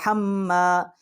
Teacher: ہا جو ہے یہ ہمارا حروف حلقی ہے، یہ حلق کا درمیان والا جو حصہ ہے وہاں سے اس کا مخرج ہے